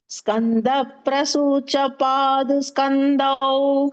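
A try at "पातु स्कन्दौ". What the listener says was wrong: பாது சொல்லக்கூடாது, பாத்து. பாத்து ஸ்கந்தௌ.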